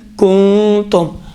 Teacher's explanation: خود ناک کے بانسے کے اندر ہی نون مخفی رہے گا۔ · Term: اخفا